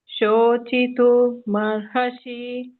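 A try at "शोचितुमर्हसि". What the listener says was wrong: ಮರ್ಹಸಿ ಅನ್ಬೇಡಿ ಮ ಹಕೆ ಕೂಡಿಸಬೇಡಿ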